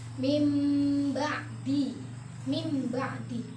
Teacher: mengganti dalam artian ee si nun mati atau kanwin ini atau nun mati ini tidak terlihat ketika dibaca namun digantikan dengan huruf mim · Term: hukum bacaan iqlab